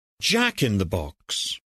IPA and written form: ʤæk ɪn ðə bɒks (jack-in-the-box)